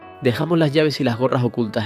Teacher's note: También es frecuente el yísmo, es decir, no distinguir entre la l y la y · En vez de la fricción fuerte que se oye en muchos hablantes castellanos, en Canarias suele aparecer una pronunciación más suave, aspirada. También es frecuente el yeísmo, es decir, no distinguir entre la lle y la y